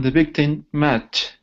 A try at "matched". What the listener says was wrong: Okay, now add a T sound here. So you're ending the word right there. You're saying match. but we have an ED right here. The ED sounds like a T, so it's matched. Matched.